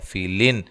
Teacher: الف کو بھی اس کے ساتھ موٹا ادا کرنا ہے، فیلن یہاں نون تنوین کا اظہار ہے، غنہ نہیں کیا جائے گا